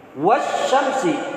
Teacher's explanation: al ada tetapi seolah-olah al itu enggak ada, karena yang kita baca sin langsung. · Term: asyamsiyah